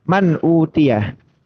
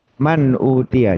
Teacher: tidak apa ya istilnya nun sukunnya jelas kemudian huruf tujuannya yang hamzah atau ha atau k atau ain atau gin atau ha ini itu juga dibaca jelas ya saling lepas tidak ada dengungan sama sekali tidak ada peleburan sama sekali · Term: Izhar halqi